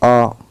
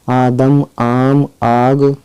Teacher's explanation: 3 الف کی آواز کے برابر اس کو کھینچ کر پڑھا جائے گا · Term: الف ممدودہ